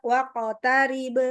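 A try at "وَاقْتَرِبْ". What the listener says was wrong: Waqotarib masih kadang monyong juga.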